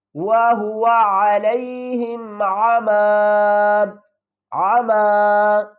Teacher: جب بھی ہم وقف کی صورت میں آخری حرف کو دو زبر میں ساکن نہیں پڑھیں گے بلکہ ایک زبر کو ڈراپ کر دیں گے اور دوسری زبر کو الف کے ساتھ پڑھیں گے